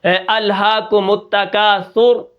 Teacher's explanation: سا کے اوپر پیش ہے، را ساکن ہوئی تو یہ را موٹی ہوگی